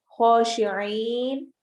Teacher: الخاشعين إلا الف مدہ على العين حروف حلقی میں سے ہے خو حروف حلقی بھی ہے اور موٹے حروف میں سے بھی ہے تو ہم اس کو موٹا بھی کریں گے اور حلق سے بھی نکالیں گے